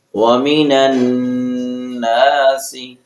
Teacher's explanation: نون پر غنہ کریں گے، نون مشدد ہے۔ مشدد حرف دو بار پڑھا جاتا ہے